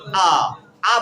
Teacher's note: आ बोलने से क्या होता है, पूरी तरह से मुंह खुल जाता है ना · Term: विवृत